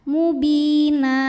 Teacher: Mad iwad karena ada baris tanwin fathah yang kita waakafkan maka baris duanya ini jadi satu jadi fathah dan dipanjangkan dua harakat